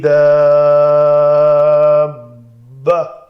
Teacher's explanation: تا مربوطہ تھی، ہائے ساکنہ بنا کر پڑھا۔ بث سا کو سین نہیں بنایا۔